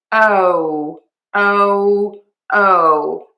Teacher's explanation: So, a couple of things here. We are going to say that long O. Open the mouth and move to a pucker.